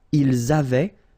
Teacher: Ils avaient, so remember, even if we've got this A-I-E-N-T, well, we don't pronounce it, or we don't pronounce this E-N-T, so we get avait, okay, phonetically.